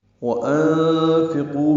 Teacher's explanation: وَأَنفِقُوا میں واو ہونٹوں کی نا تمام گلائی سے ادا کریں گے، حمزہ کو نون سے ملانا ہے، نون ساکن پہ اخفا ہے، آگے فا آنے کی وجہ سے فا کو جلدی ادا کرنا ہے، قاف پر ہے، قو واو مدہ ہے، 2 حرکات لمبا کریں گے.